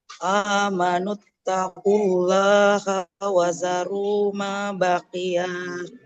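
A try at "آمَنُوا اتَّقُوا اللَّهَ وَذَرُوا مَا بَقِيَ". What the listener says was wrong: Baqiyanya nggak panjang. Allah haknya jangan panjang ya. Amanut taqullaha wa zaru. Nggak boleh baqiyah ya.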